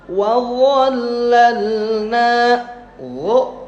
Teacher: ujung gigi seri ujung lidah dirapatkan dengan ujung gigi seri atas. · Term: huruf dha